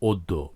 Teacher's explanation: ফলা থাকে অর্থাৎ যদি জ ফলা যুক্ত ব্যঞ্জন বর্ণ থাকে তাহলে আদ্য অটি সাধারণত ও বা ওকারের মত উচ্চারিত হয়